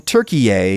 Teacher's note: with the emphasis on the last syllable and everything